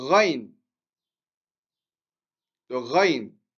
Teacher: comme si on avait de l'eau au fond de la gorge